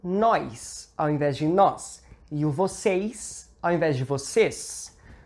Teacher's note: esse som s tem a capacidade de puxar, digamos assim, o som, criar esse i antes dele